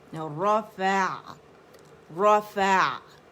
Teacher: इसमें तवस्सुत, आइन की आवाज़ दरमियानी चलेगी, रफ़ा रफ़ा, ठीक है।